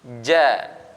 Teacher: ini kita keluarkan dari tengah lidah ke langit-langit bagian tengah beda kalau kita Indonesia seperti huruf c bukan c bukan jangan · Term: huruf Jim